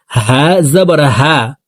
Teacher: হা হরফকে হলকের শুরু থেকে পড়ব। হা জবর হা, তাড়াতাড়ি করে উচ্চারণ করতে হবে।